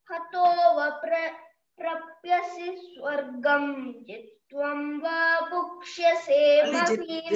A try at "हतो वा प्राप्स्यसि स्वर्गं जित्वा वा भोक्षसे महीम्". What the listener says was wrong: జిత్వం అంటున్నావు, ప్రాప్యసి అంటున్నావు. ప్రాప్యసి కాదమ్మి, ప్రాప్స్యసి. ప్రాప్స్య, ప్రాప్స్యసి.